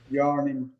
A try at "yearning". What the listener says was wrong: Yearning. Yearning. A little bit more, yearning. You're saying a little bit more yarn. We don't need an R in there. Just forget the R exists.